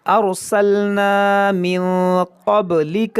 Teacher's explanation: را ساکن سے پہلے زبر یا پیش ہو تو بھی را موٹا ہوتا ہے ، اس کو پڑھیں گے موٹا کر کے، ارسلنا من قبلک